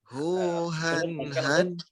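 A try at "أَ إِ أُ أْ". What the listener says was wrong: Hu ah. Sukunnya jelaskan hamzahnya.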